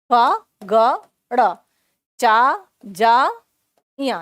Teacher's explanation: जब हम इनका उच्चारण करते हैं तो कम प्राणवायु की आवश्यकता पड़ती है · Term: अल्प प्राण की ध्वनि